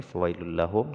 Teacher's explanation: Fawailul lahum ini diidgham bila gunnah, tidak boleh dengung.